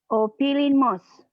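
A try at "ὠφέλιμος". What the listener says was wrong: Ada E, ada E. Opelimos.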